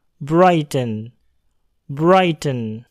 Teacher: huruf R terletak di depan huruf I yang berbunyi vowel. Maka bunyi R dapat terdengar.